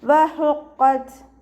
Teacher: ഹഇൻ്റെ മഖ്റജ് വസത്തുൽ ഹൽക്കാണ്, സൗണ്ടിനെ വ്യക്തമാക്കുക. · ത സുക്കൂനിൽ നിർത്തുമ്പോൾ എയർ പാസ് ചെയ്യണ സൗണ്ട് കൊടുത്തിട്ട് നിർത്തുക.